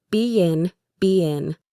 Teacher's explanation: The two vowel sounds are separated by a small Y sound.